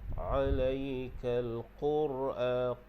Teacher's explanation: Ra di situ kita baca dia dengan tebal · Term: tebalkan ra